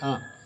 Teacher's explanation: विव्रत स्वर विव्रत स्वर या निम्न स्वर ऐसी ध्वनि होती है जिसमें जिव्हा को मुंह में जितना संभव हो सके उतने नीचे तालु से दूर रखा जाता है।